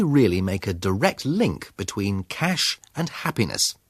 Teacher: His intonation, the higher note, the slower speed and careful stress, all indicate that we should pay attention to these words.